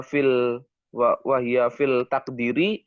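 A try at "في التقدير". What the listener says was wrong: Ini alif lamnya syamsiah. Fit taqdiri, jangan fil taqdiri. Fit taqdiri.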